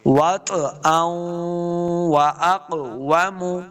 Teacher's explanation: حمزہ کو واو کے ساتھ لانا ہے اور غنہ کریں گے